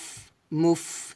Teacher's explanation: ওয়া উলাইকা হুমুল, মিম ফা পেশ মুফ, মুফ, এখানে বাতাস বের হবে, মুফ, এটা হামসে হরফ। হুমুল মুফে, মুফে এটা হবে না, হবে মুফ, এভাবে।